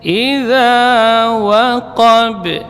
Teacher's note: Waqab di sini qafnya tebal tapi qalqalah kubranya dibaca tipis karena ba huruf tarqiq.